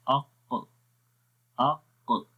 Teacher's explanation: مخرج اس کا تھا زبان کی جڑ اور تالو کا نرم حصہ، اق۔ تو اس میں ہو کیا رہا ہے کہ آواز اوپر کی طرف اٹھ رہی ہے اور زبان کی جڑ بھی، اق۔ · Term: قاف